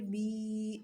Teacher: یہ یا مدہ ہے، ایک الف کے برابر لمبا کریں گے